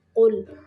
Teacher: قاف کو موٹا پڑھنا ہے، لام کو قلقلہ نہیں کرنا